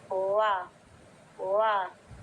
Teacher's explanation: आपका जो पहला होठ है दूसरे होठ से ना टकराए और बीच में एक छोटा सा सुराख बन जाए। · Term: अरबी वाव